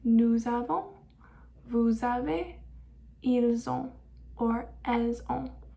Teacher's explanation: you're going to pronounce the S at the end and kind of connect it to the next word.